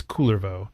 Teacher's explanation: with a stress on the first syllable